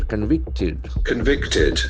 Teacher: That ed endings will have id sound here.